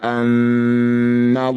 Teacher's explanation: nun bertasydid disebut bacaan gunah musyaddadah dengungkan dua harakat